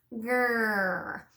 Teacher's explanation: the whole tongue is gonna slide back and bunch up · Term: bunch tongue R